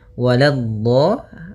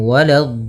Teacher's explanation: Lanya jangan sampai tebal. Jangan walad tapi lanya tipis. Walad baru di dhadnya yang tebal.